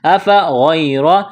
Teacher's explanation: أفغير، الف کے اوپر زبر ہے، اس کو حمزہ پڑھیں گے، غین کو موٹا کرنا ہے، یا ساکن ہے اس سے پہلے زبر ہے، یا لین ہے، اس کو کھینچنا نہیں ہے، را کے اوپر زبر ہے، را کو موٹا کرنا ہے۔ · یعنی لفظ اللہ کے نام سے پہلے زیر ہے تو لفظ اللہ کے نام کو باریک کرنا ہے · یا ساکن سے پہلے زیر ہے، یا مدہ ہے، الف کے برابر کھینچنا ہے